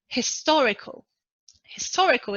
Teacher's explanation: historical is an adjective and the stressed syllable is the second syllable